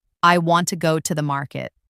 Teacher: the stressed words are want, go, and market. The smaller words like I, to, and the are less stressed. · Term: sentence stress